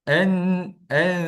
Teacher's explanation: Yang ketiga, dengung terlebih. Sepatutnya dua harakat tapi terlebih panjang sampai tiga, empat lima harakat.